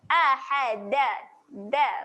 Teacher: Okey, lagi satu huruf dal, makhrajnya jangan lupa makhraj huruf dal, hujung lidah cucuk belakang gigi atas.